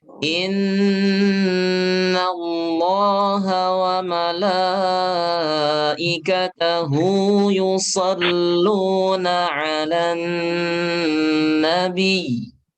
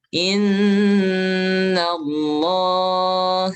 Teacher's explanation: ketika sebelumnya berharokat fathah, sebelum lafaz Allah fathah, maka lamnya tebal.